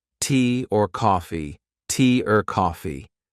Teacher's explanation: the word or gets reduced, gets shortened, gets linked to a word before or a word after